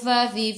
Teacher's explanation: fa fi fu gigi atas menyentuh perut bibir bawah